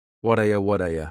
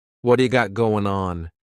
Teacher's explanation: surrounded by vowel sounds is going to change to a d it's called a flapped t and it just rolls off your tongue in a smooth way